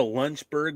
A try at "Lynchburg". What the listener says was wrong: Yeah, you said Lunchburg. That's why it confused us.